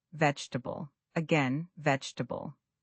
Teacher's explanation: The middle syllables blend together.